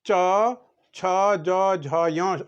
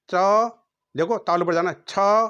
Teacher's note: जब जीभ तालु से टकराता रहता है, हर शब्द के लिए तालु पर टकराता है, उसको कहते हैं तालव्य